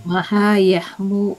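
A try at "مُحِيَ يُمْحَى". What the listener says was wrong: Hurufnya tertukar tempat. Tadi Ibu bilang yahmu.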